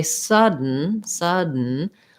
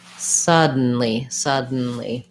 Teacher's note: word is a syllabic n so when i say sudden sudden i just basically move directly from the d to the n and then for suddenly i just add the li so it